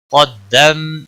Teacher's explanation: قاف حروف مستعلیہ میں سے ہے، موٹا پڑھیں گے۔